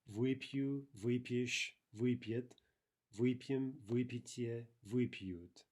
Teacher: We'll review this later, but the prefix вы in perfective verbs is always going to be stressed, right?